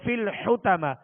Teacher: حا کو وسط حلق سے ادا کریں گے اور طا کو پر پڑھیں گے